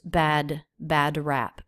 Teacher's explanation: we do have a D sound, very quick, subtle in the vocal cords. It's not released.